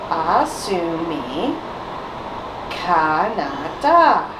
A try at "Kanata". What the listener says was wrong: I heard a D, not a T.